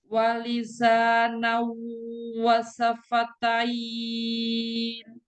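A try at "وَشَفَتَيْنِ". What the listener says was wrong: Pakai shin.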